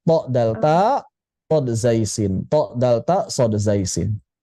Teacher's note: Jadi, antara ujung lidah dengan gigi seri atas, belakang gigi seri atas. Jadi, kalau th ta nempel, kalau shod zaiin tidak nempel